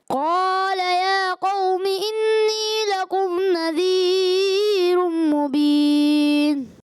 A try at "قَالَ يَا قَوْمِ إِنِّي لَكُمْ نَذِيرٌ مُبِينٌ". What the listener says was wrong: انی یہاں غنہ کمزور ہوا، اور پھر لکم نذیرم، یہاں پر مد اصلی کو آپ نے لمبا کیا، تو یہ نہیں کرنا.